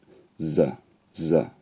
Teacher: The tongue goes a bit further back in the mouth when you say the consonant. And to get from s to z, you also only need one change, which is called voicing. So your voice box kind of buzzes when you say it.